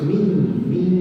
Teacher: Hurufnya huruf yang nipis. Jadi dengungnya mesti nipis. Menghampiri kaf.